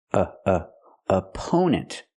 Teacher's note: the first syllable is a relaxed uh sound like cup and up a a opponent the stress is on the second syllable we